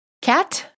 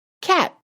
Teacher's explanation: Listen to the difference between the released T and the held T. The first word you hear has a released T, and the second word has a held T.